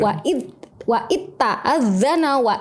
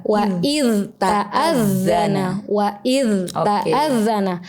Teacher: Harusnya diizharkan, kemudian direhwahkan. Rehwah itu dialirkan suaranya. Jadi yang betul bukan wa itta'adzana tapi wa iz ta'adzana.